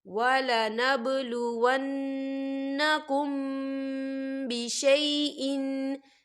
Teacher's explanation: تو ہم یہاں غنہ کریں گے، میم ساکن کی آواز کو ناک میں چھپائیں گے۔